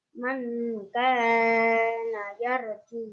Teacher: Man kana yarju termasuk bacaan ihfa. Alasannya karena nun sukun bertemu dengan kaf. Cara membacanya samar dengung 3 rokat.